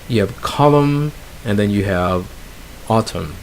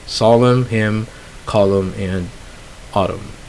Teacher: And our final set is words that end with N. They end with MN, sorry, and the N is dropped.